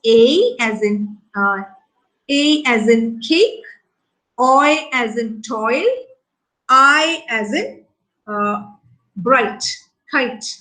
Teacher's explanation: The diphthongs that move towards a front vowel. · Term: fronting diphthongs